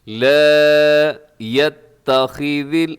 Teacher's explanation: خا موٹا ہے، باقی جتنے بھی حروف ہیں وہ سب کی باریک ہیں